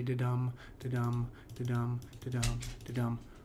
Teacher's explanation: the particular rhythmic pattern we're looking at in Shakespeare's poems are iambic pentameter. This has a da-dum, da-dum, da-dum, da-dum, da-dum rhythm to it